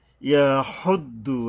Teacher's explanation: এই যে লম্বা হা, গলায় শোষ ভাব আসবে শক্তভাবে, মানে সুন্দরভাবে আদায় করতে হবে এটাকে, মানে একটু বেশি সময়ও লাগে গোল হায়ের চেয়ে।